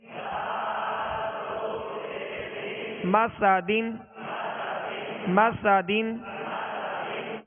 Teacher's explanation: میم زبر ما سین زبر سا مسا دال دو زیر دن مسا دن مسا دن. سین کو سختی کے ساتھ اس میں سیٹی کی آواز پیدا ہوگی